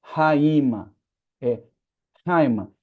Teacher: A palavra Haima, da mesma forma que em hagios, ela tem o espírito forte, assoprado, rústico · o som aqui de alfa com iota é um ditongo junto, é como se fosse uma vogal só